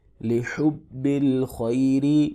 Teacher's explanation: خوا کو موٹا پڑھیں گے، یا ساکن سے پہلے زبر ہے، لین ہوگا، تھوڑا سا کھینچ کے پڑھیں گے ، را کے نیچے زیر ہے، اس کو باریک پڑھیں گے،